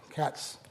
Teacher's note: there's a hissing sound, but there's no voicing. So, that's not a Z sound, it's an S sound. So, that's not plusvoiced.